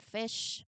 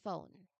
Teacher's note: a healthy, breathy sound made by your top teeth slightly touching your bottom lip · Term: F sound